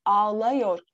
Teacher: Ama yor eki gelince ağlıyor olarak daralma meydana geliyor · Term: ünlü daralması